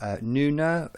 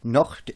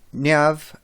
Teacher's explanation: N is a voiced nasal